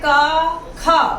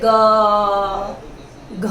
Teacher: जैसे ग, घ बोलकर देखिए आप खुद और स्वर तंत्री को हाथ लगाकर देखिए, इसमें कंपन होगा। लेकिन क और ख के उच्चारण में कंपन नहीं होता है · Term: अघोष